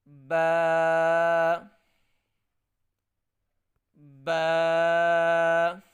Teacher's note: اس با کو ایک الف کے مقدار لمبا کر کے پڑھنا ہے